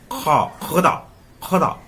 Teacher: वो क अल्प प्राण है, हल्का से जोड़ देंगे, लेकिन ख में महाप्राण है, यानी कि ज्यादा लगाएंगे। उष्मय संघर्ष, इसको बोलने में मुंह से गर्मी आती है,